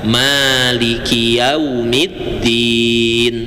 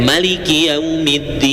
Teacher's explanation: Yang pertama dibaca panjang maiki yaumiddin. Cara yang kedua malikinya dibaca pendek. Maliki yaumiddin.